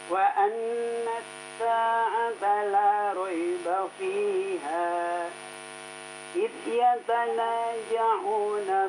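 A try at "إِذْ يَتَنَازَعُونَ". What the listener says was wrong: Zai, huruf zai. Idh yatanaza'una. Ulang lagi.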